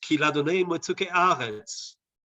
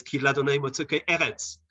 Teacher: So it's got the stress on it on the beginning of a segolate noun.